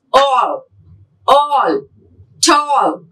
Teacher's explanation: Again from the back sound. Back round vowel between half close and half open.